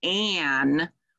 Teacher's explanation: see an a you would expect ah but that nasal sound when you co-articulate the ah and the m it sort of pulls ah into your nose and nasalizes it so you have that um instead of an so that's why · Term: glued sounds